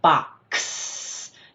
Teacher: So when you say the sound of X it's /k/ /s/. So it's that /k/ and /s/ sound together.